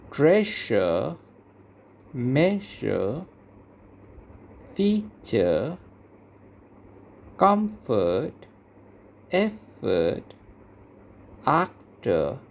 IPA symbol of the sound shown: ə